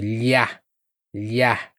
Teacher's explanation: O do LH é como uma lambida no céu da boca. Então, você vai sentir lhá, lhá, só que mais para trás.